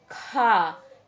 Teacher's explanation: खा बोलते समय जो हमारी वायु, जो हमारे मुख से वायु निकलती है बहुत तीव्र गति से बाहर निकलती है।